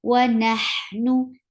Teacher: For fatha on noon, you open your jaws and attach with ha, wa nah, and ha will get sifa rakhawa, and rakhawa is a flow of sound.